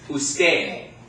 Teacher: remember that D sounds more like a TH